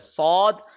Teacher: صاد اس کو موٹا کر کے پڑھ رہے ہیں، یعنی موٹا کیسے؟ اس میں او کی ساؤنڈ شامل ہو رہی ہے ، AWE او کی ساؤنڈ شامل ہو رہی ہے، لہٰذا یہ · زبان کی جو نوک ہے وہ نچلے جو دانت ہیں 2 دانت ہیں ان کی بیک سائڈ پہ ٹچ ہو رہی ہے ، اور صاد اس کو موٹا کر کے پڑھ رہے ہیں،